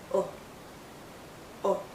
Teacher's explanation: It's also more a relaxed sound. Our lips are still rounded, but it's not a tight circle, it's a relaxed circle.